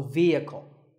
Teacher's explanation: the e is a long vowel and the H is silent